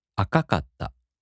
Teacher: 赤い turns into 赤かった. So the accent falls on the first か.